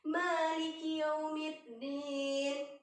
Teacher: ma-nya itu berharokat fathah 2 harokat. Jadi dipanjangkan, akan tetapi tidak boleh terlalu panjang. 2 harokat saja, ya.